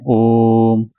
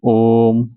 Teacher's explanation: ये जो ओ के और म के बीच में जो समय लगा यह 3 मात्राओं का समय है, इसलिए यह प्लुत स्वर माना गया है।